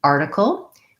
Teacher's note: looking at the word article, we have first syllable stress, which means the R is long and has a clear vowel, and the tickle is short and reduced and has reduced vowels.